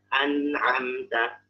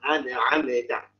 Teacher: tidak suaranya itu pertengahan, tidak terlalu mengalir, tidak juga terlalu tertahan. Jadi dia nggak nggak terlalu tertahan dan juga nggak terlalu mengalir, nggak tapi dia cukup ketika sukun ya, tentunya ketika sukun. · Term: bainiyah